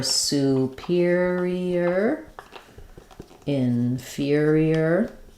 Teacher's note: superior, inferior, both of these are stressed on the second syllable